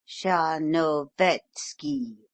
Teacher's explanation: give it quite as though it were written char no vetsky in fact with the accent on the third syllable